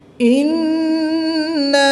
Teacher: نون مشدد میں ہمیشہ غنہ ہوتا ہے